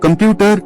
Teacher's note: Computer, stress on the second syllable